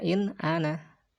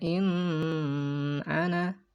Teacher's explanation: Apabila si nun sukun atau tanwin itu bertemu dengan salah satu huruf halki ini, maka harus dibaca dengan terang nunnya ya, jelas nunnya. Maksudnya tidak samar, tidak dengung, dan pendek.